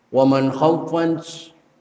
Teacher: Nah, kalau ini nun mati ketemu kha. Kalau tadi ketemu sa, ikhfa, sedangkan ketemu kha, itu hukumnya idhar. Jelaskan, karena arti idhar itu adalah jelas.